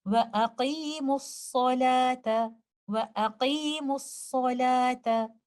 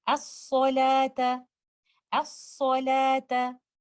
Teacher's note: We merge the letter lam completely into letter sad and you will not hear any sound of letter lam. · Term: idgham ash-shamsi